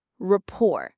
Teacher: It sounds like this, rapport. The stress is on the second syllable, rapport. It rhymes with door or more, rapport.